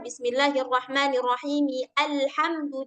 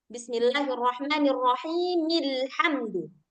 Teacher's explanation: Nah, kalau misalkan kita mau sambung nih dari bismillah ke alhamdulillah, maka bacanya bismillahirrahmanirrahimilhamdu. Enggak dibaca nih si Hamzah wasalnya.